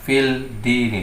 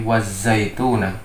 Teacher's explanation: Jadi bukan membacanya wal zaituna, tetapi wazaituna. Jadi wawu diidghamkan ke huruf za.